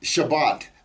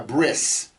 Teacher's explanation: pronounce the T sound at the end of a word as an S